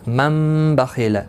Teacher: تنوین یا نون ساکن کے بعد با آئے تو نون کو میم سے بدل کر گنہ اور اخفاء کے ساتھ پڑھیں گے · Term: اقلاب